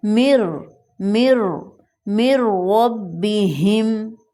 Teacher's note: ہم من کی میم کو را کے ساتھ ملا دیں گے، را کے اوپر شد آ جائے گا اور درمیان میں جو نون ساکن ہے وہ سائلنٹ ہو جائے گا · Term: ادغام